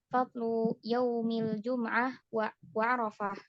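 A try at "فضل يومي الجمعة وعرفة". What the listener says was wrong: bukan yaumi tapi yaumai. yaumai. Nah, fadlu yaumail jum'ati wa arafah.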